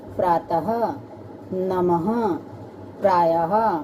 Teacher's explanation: विसर्ग, इसका उच्चारण ह की तरह होता है